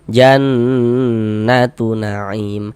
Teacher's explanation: Aim dibaca panjang. Ini namanya mad arid li sukun, namun pada awalnya namanya adalah mad tabi'i.